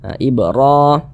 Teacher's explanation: ini ini huruf di atasnya memiliki tanda seperti ini dibaca panjang Mad thi'i panjangnya dua dua harakat